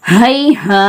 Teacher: அலீஃப் ஜபர் அலிஃபே மத்தா, ஒரு அலிஃப்க்கு நிகராக நீட்டணும்